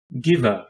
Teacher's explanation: it is a voiced velar stop pronounced like the g in gift